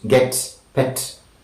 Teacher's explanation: front, between, half closed and half open, unrounded and short